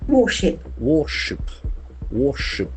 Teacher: The middle R is silent.